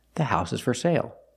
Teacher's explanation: For is not stressed because it's not at the end of the sentence, so we pronounce it for sale.